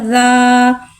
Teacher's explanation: अलिफ से पहले ज़बर आ रहा है, अलिफ मद्दा हो रहा है, लिहाजा अलिफ मद्दा को एक अलीफ यानी 2 हरकत के बराबर खींच के पढ़ेंगे। ज़ाल अलिफ ज़बर ज़ा।